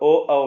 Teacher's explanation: ओ, औ में जीभ पीछे चली गई। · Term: पश्च